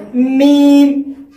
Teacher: जब हम दोनों होंठों के खुश्की का हिस्सा जब मिलाते हैं तब मीम की अदायगी होती है